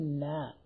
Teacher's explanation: മേലെ മുൻപല്ലിന്റെ ഊനിൽ നിന്ന് ലാമിന്റെ അല്പം താഴെ. ന ല അപ്പോ ല കഴിഞ്ഞിട്ട് ന. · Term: നൂൻ